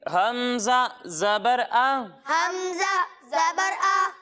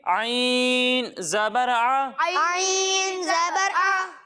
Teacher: جب ہم حمزہ کی ادائیگی کریں گے تو اسے ہم حلق کے نچلے حصے سے پڑھیں گے، اور جب ہم عین کی ادائیگی کریں گے تو اسے حلق کے درمیانے حصے سے پڑھیں گے۔